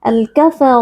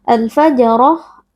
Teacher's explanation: RO di sini berharakat fathah kita baca dengan mengangkat pangkal lidah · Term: ro tebal